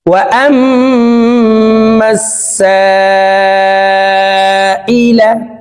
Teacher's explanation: সা চার আলিফ টেনে পড়তে হবে, কারণ মদর হরফের উপরে মোটা চিহ্ন বামে হামজা মধ্যে মুত্তাসিল চার আলিফ টানিয়া পড়িতে হয়।